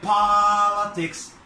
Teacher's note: هنا هنعمل ستريس على المقطع الاولاني. On the first syllable. Politics. طبعا هنعمل المقطع الاولاني اللي هو الحرف المتحرك اللي فيه الفاول, هنعمله longer, اعرض في الصوت او طويل في الصوت, ولاودر اعلى.